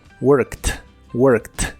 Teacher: en cuanto a la pronunciación la Ed que le agregamos al final suena como una t